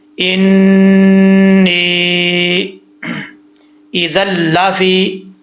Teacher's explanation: یہاں پر نون کے اوپر شد ہے تو 1 الف کی مقدار غنہ کریں گے۔ آگے یا ہے، یا کے اوپر یا ساکن سے پہلے زیر ہو تو یا مدہ ہوتا ہے، لیکن یہاں پر یا کے اوپر مد بھی ہے، مد منفصل، اس کی مقدار 2.5 الف ہوتی ہے، 2 الف 2.5 الف آپ کر سکتے ہیں، ٹھیک ہے؟